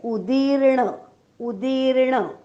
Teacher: उदीर्ण मधला उ ऱ्हस्व आहे आणि दी दीर्घ आहे. हा उदीर्ण आणि जो र लिहिलेला दिसतोय तो न वर जो रफार आहे ना, त्या रफाराचा र हा उच्चार केलेला आहे.